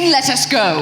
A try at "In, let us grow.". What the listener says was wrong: In, let us grow. grow. It's the R sound.